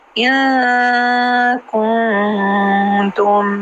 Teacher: ان نون کے بعد کاف، کن نون کے بعد تا، تو 2 اخفا ایک ساتھ آ گئے ہیں